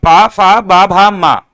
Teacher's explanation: इनका उच्चारण स्थान ओष्ठ से होता है